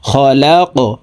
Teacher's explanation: কফ কলকলার হরফ উপরের দিকে ধাবিত করে ধাক্কা দিয়ে উচ্চারণ করব।